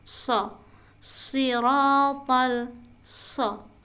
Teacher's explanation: posisi lidahnya ke bawah tapi ada hembusan angin di atasnya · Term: sin